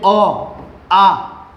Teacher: તમે જ્યારે ઉચ્ચારણ કરો કે ભાઈ અ આ બરાબર તો તમારે શામાંથી ઘર્ષણ થાય છે હવે હવાનું ભાઈ કંઠમાં ઘર્ષણ અનુભવાય છે · સ્વર અ અને આ કેવા છે ભાઈ કંઠ્ય છે કંઠમાંથી ઉચ્ચારણ થાય છે